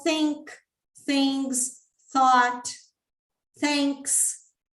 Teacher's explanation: Eu tenho um TH que é voiceless, que não há vibração